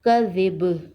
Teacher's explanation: اور وقف کی صورت میں با پر خلخلہ ہوگا۔ کاف زبر کا، زال زیر زی، کزی، با دو زیر بن، کزی بن، وقف کذب، کزی بن، کذب۔